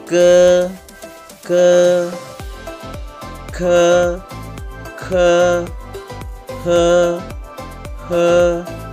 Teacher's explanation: sekarang adalah suara akar lidah